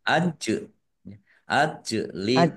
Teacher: Jim sukun bacaan qalqalah dibaca memantul ditampakkan pantulannya.